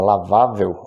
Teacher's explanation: Observem que a sílaba tônica é vá, que é a penúltima, e a palavra termina em L, portanto, acentua-se.